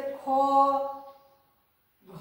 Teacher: ये हमारा महाप्राण है। और जब हम लोग इन वर्ण को बोलते हैं उस समय हमारे मुंह से हवा अधिक निकलती है।